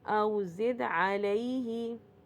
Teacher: یا ساکن سے پہلے زبر آ رہا ہے تو یہ کیا بن رہا ہے، یا لین بن رہا ہے